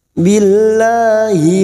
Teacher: lam jalalah yang didahului kasrah kita baca tarkik atau tipis